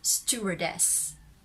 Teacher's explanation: The main stress is in des, and the secondary stress for the first syllable